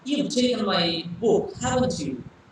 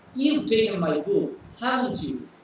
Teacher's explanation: So when I am saying haven't you, my tone has gone up. So that is called rising tone.